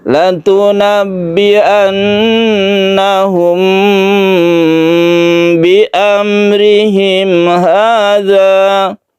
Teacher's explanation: Latunabbi'annahum, ini gunnah lagi, kemudian ini ada mim bertemu ba, ikhfa syafawi, ini dipanjangkan, ditahan dulu, humnya ini tidak langsung ke ba